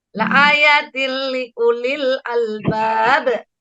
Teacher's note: Ada tanwin bertemu lam. Bacanya masuk dengan tidak dengung. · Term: idgham bila guna